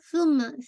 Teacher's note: آپ کے بالکل دانتوں کے سامنے رہے گی، ثم، ٹھیک ہے، ثم میم پہ آپ کا موسٹ کمپلیٹ غنہ، اکمل غنہ آپ نے ہولڈ کرنا ہے